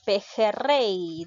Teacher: lleva la mayor fuerza de voz en rey que es última sílaba